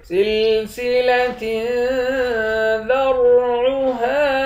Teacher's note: سلسلۃ ذرعها، تا کے نیچے دو زیر ہے، یہاں اخفا کریں گے، را کو موٹا پڑھیں گے، عین کے بعد الف ہے، اس الف کو ایک الف کے مقدار کھینچ کر پڑھیں گے